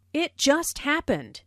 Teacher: notice the stress on just which emphasizes that the accident happened very very recently